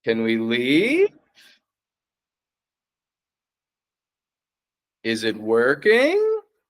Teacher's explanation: We kind of start medium in pitch, go down, and then sharp rise up. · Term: Focused pitch placement